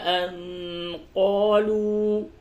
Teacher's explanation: نون ساکن کے بعد قاف اخفا ہوگا